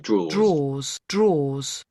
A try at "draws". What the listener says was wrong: Draws. Spend a fraction of a second longer saying the or sound in the middle. So oars, draws,